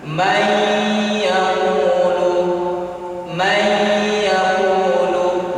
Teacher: Jadi idgham dan digunakan dua harokat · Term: idgham bi gunnah